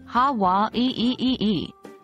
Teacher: That's the okina in play, which is a unique feature in the Hawaiian language. It's a glottal stop, similar to the pause in oh. · Putting it all together, it sounds something like ha wa ee. Take note of the slight pause after wa. That's the okina in play, which is a unique feature in the Hawaiian language.